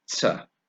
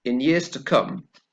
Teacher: notice the weak sound, yeah, on the unstressed word